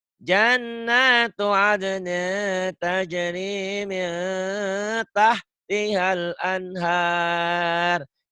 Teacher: Jannatu adnin ikhfa ditahan. Ya, samar ditahan.